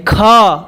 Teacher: ख कंठ से आवाज आती है